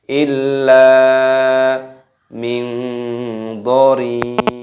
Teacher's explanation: lamnya terdapat tasdid, dimasukkan, diidghamkan, ditekan dan dipanjangkan lam alifnya.